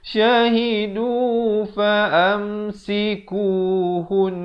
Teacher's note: Di sini wajibul gunnah dengungkan 2 harakat dahulu, baru masuk nafil.